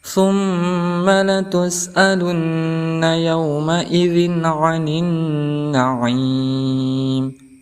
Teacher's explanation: kita bertemu lagi huruf mim yang ditasdidkan, maka dihukumi sebagai ghunnah musyaddadah. Cara membacanya yaitu dengan didengungkan 2 harokat ataupun 1 alif.